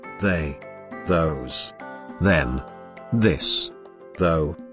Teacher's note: The sound is a voiced dental fricative sound. It is voiced because of the vibration of the vocal cords in the course of its articulation.